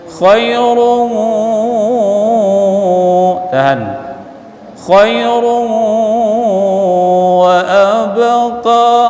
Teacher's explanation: run baris tanwin jumpa dengan waw idgham bi gunnah dengung